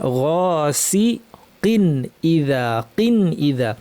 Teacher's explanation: ওয়ামিন শাররি গাসিকিন, গ ভারী, গাসিকিন ইদা। কিন তানউইনের পর হামজা এসেছে, তানউইনটা স্পষ্ট করে বলবো, গুন্নাকে বাড়াবো না। গাসিকিন ইদা, কিন ইদা।